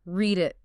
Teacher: The last sound of the first word flows right into the first sound of the next. If you stop between them, read it, it sounds hesitant. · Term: Linking sounds